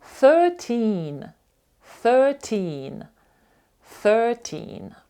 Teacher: У нас є дві крапки після е і і це означає що ці голосні вони продовжені